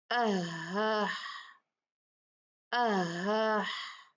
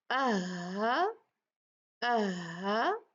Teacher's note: vocal कड थोड़ी सी खुलती है और एक दूसरे के बहुत करीब होती है ब ज्यादा नहीं खुलती थोड़ी खुलती है यह हमजा की तरह